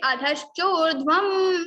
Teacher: It is ma. So we have to put ma in the place of Anuswara.